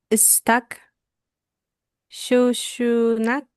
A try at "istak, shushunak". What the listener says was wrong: Ahí los dos últimos dos los ha acentuado mal. Recuérdese que el acento nunca va al final. Istak. Shushuknach.